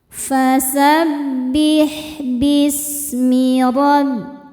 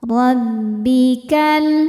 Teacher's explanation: Ra dibaca tafkhim karena berharokat fathah. Cara bacanya tebal.